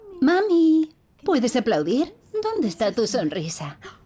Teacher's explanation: Es muy exagerada. Tiene un tono más alto. Tiene contornos de entonación exagerados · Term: habla dirigida al bebé